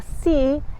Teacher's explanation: Igual que en español, para pronunciar la S comienzas colocando la punta de la lengua contra el techo de la boca, muy cerca de los dientes frontales superiores. Por ejemplo, la palabra sí en inglés se pronuncia igual que la palabra sí en español.